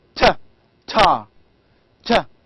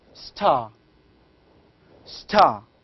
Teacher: t sound in the word like tar, tar, is normally produced with a strong puff of air. · in the first tar, you can feel that there is a strong puff of the air, t. But when we say star, here we do not have a strong puff. This puffing is called as aspiration.